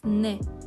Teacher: Til old qismida chiqariladigan N tovushi.